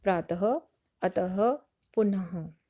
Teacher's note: विसर्ग, जिनका चिन्ह 2 बिंदी ऊपर नीचे 2 बिंदी होता है उन्हें विसर्ग कहते हैं और यह अंत में ह की आवाज निकालता है। जैसे प्रातः, अतः, पुनः।